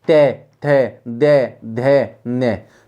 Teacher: अब देखिए तय, दंते वाले को, टे, ठे, दे, धे, ने, सब पे दांतों के बीच में जीभ आई है, दांतों को जीभ ने अच्छी तरह से छुआ है।